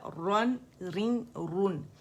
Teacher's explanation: مخرج پہ جائیں گے جہاں گم برج ہے جو تالو کی سائڈ پر ہے وہاں سے ادا ہوگا. ٹچ کریں گے باقاعدہ, رن رن رن.